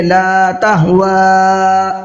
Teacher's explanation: لا تہوا، لتہوا نہیں پڑھنا ہے، لا تہوا. واو کے اوپر بڑا مد ہے، اس کو تھوڑا سا اور زیادہ کھینچیں گے، لا کو کم کھینچیں گے. لا تہوا اس طریقے سے.